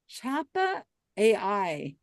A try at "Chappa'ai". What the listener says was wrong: It's not AI, it's I. Pronounced I. Chappa I.